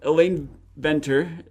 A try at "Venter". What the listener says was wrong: Fenton. Pronounce the V like an F.